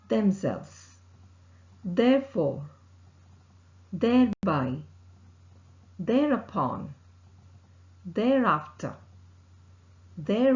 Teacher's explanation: the air escapes between the upper front teeth and tip of the tongue here the vocal cord vibrates · The sound is a voiced sound, which is articulated with the tip of the tongue close to the upper front teeth. The air escapes between the upper front teeth and tip of the tongue. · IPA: ð, /ð/